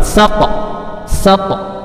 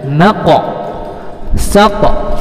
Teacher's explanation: Huruf qa dan to itu pantulannya ke huruf o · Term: qalqalah sugro